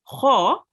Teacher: Kha is also a thick letter, which means when you pronounce it, you have to round your mouth a bit. It comes from the throat, and it has a dot on top of it.